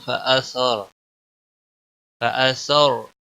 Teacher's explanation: را ساکن سے پہلے زبر ہے، اس لیے پر پڑا جائے گا